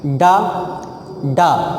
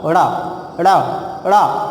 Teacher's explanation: मूर्धा को टच करे और तुरंत वापस आ जाए, झटका मारकर वापस चली आए, उसे हम उच्छिप्त या द्विगुण व्यंजन कहते हैं · ड़ा बोलते समय जो है जिह्वा देखो कितनी तेज ऊपर जाती है और तुरंत वापस आती है, जितनी स्पीड में जाती है उतनी स्पीड में चली जाती है।